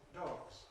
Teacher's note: If the last sound is voiced, ‘dog’ [dɒg], [g]… voiced, then we add voiced [z] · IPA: [dɒgz]